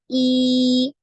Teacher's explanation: suara yang keluar itu dari atas lidahnya lidah bagian atas ya di langit-langit ya Nah diantaranya diantara lidah dan langit-langit jadi ketika fathah ini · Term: kasroh